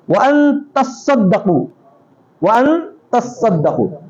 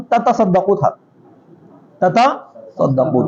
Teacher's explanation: یہ بالتشدید کے ساتھ ہے, علی ادغام التاء فی الاصل فی الصاد, تا کا ادغام کریں اصل میں صاد میں